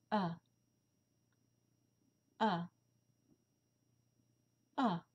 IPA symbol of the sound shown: æ